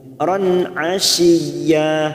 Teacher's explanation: fathatain pada huruf ro yang bertemu ain idhar halqi kita baca jelas tanpa mendengung.